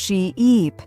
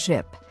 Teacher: A great way to practice this is by exaggerating the long vowel sounds. Say sheep and stretch the E sound she-eep, then say ship with a short sound